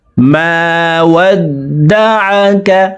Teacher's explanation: আইনকে হলকের মধ্যখান থেকে উচ্চারণ করব, কারণ আইনের মাখরাজ হলকের মধ্যখান থেকে হবে।